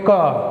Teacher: उच्चारण में जीभ का पश्च भाग कोमल तालु को स्पर्श करता है। फिर से देखिए, बात मैं किया तालु, ठीक है, जीभ का पश्च भाग, ये वाला भाग, मतलब ये जीभ होगी ना, इसका पश्च भाग। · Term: कंठ